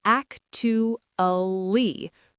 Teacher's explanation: We crush the syllables together. We don't say 4 syllables, we say 3. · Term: 3 syllables